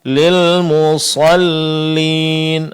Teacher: Ingat yang ditebalkan di sini huruf sad, sedangkan lam setelahnya ditipiskan.